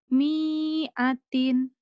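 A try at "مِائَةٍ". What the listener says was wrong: Pendek ini mah semua. Mi'atin. Mi'atin. Mi'atin. Pendek. Mi'atin. Jadi enggak ada yang panjang, enggak ada yang nahan. Mi'atin.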